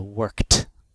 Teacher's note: spelled e d it makes that t sound so voiceless sounds when verbs end in voiceless sounds like C the Ed sounds like the voiceless T